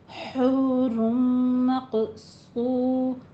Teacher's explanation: हा को वस्ते हलक से अदा कीजिए बिल्कुल बारीक, हूर नहीं कहना, हा नहीं है।